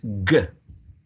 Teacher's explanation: this G sound is a velar sound. In terms of manner of articulation, it's a plosive sound. And in terms of voicing, it's a voiced sound